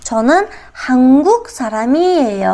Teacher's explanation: Darak aytayotganimizda ohang pastga tushadi. Chonin hanguq saramiyey pastga tushyapti.